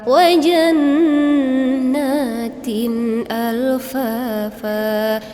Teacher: apabila tanwin bertemu dengan alif itu izhari dibaca jelas Al [Musik] Fa jelas Yai itu mad asli Fa yang terakhir